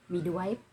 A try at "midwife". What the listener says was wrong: Hindi ka sigurado tinatawag midwife. Patanong kasi yung ano mo eh, midwife. I say, midwife? You're asking me always, not telling me.